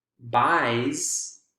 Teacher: or not voice voiceless no vibration buys i i i by i is a voiced vowel sound so the s is going to be voiced as well